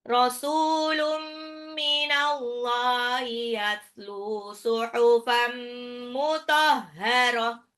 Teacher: Rasulun, sinnya 2 harkat, tanwin ketemu mim idgham bi gunnah, dilebur tapi ditahan.